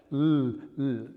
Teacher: That's lateral because the width of your tongue is in touch with your teeth. L, L. And it is dental because the tip of your tongue is right up against the back of your top front teeth.